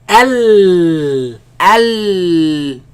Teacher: The sound escapes from the sides. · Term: lam